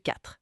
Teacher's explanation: Pas de son E à la fin. Attention, juste 4.